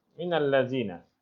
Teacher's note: Tapi bila nun mati jumpa alif lam, dia tidak sebutlah min lagi, disebut minal lazina. Minal lazi itu maksudnya itu mim nun.